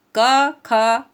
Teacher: क ख ये आप पढ़ेंगे तो आपको ऐसा लगेगा आपके गले से आवाज़ निकल रही, मतलब कंठ से आपको आपकी आवाज़ निकल रही है, ठीक है ना।